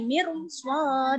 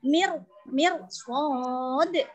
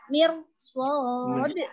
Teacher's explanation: Ro itu harus dibaca tebal. Contoh yang pertama ini mir swad. Jadi kamu nggak boleh baca meringis. Kalau tipis kan meringis. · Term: bacaan tafkhim